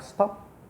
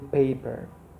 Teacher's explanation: And then, ordinary p, okay, occurs as a coda. And then when phoneme p occurs as an onset, it is realized as aspirated p, like in paper.